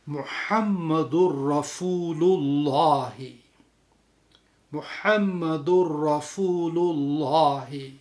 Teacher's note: تجوید کے جو رولز ہیں ان میں ادغام بالغنہ ہو جاتا ہے محمد اور رسول کے درمیان میں